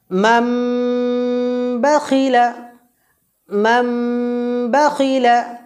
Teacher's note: এখানে নুন সাকিনের পরেও বা এসছে, তো এখানে নুন সাকিনের উচ্চারণটাকে আমরা হজব করে দিয়ে ছোট্ট যে মিম আছে, এই মিমের সাথে যুক্ত করে গুন্না সহকারে পড়ব। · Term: ইকলাব গুন্না